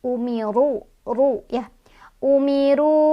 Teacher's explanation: Jadi otomatis ro yang barisnya di atas dibacanya tebal, ditebalkan. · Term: tafkhim